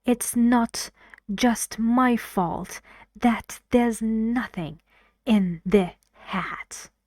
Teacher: I sound angry I use stress and falling intonation on those stressed words